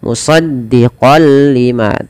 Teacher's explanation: masuk tanwinnya kepada lam, nunnya hilang. Musaddiqal lima tanpa ditahan.